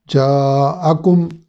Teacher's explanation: مد اصلی کے فوراً بعد حمزہ ہے تو اس لیے اس کو 3 سے 4 الف کے برابر لمبا کرنے کو مد متصل کہتے ہیں